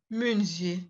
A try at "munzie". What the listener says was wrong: Non, ZH, ce n'est pas Z, c'est je. ZH. Chaque fois que vous allez voir ZH, ne prononcez pas de Z là-dedans.